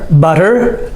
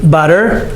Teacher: It has the D sound, even though it's the T, but we say it with the D sound